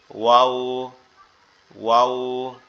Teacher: গোল করে ঠোঁট 2টা গোল করে আওয়াজটা একটু নরম সরে আসবে